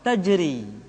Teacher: Yang berikutnya adalah huruf ra yang dibaca tipis. Ra dibaca tipis ketika dia berharakat kasrah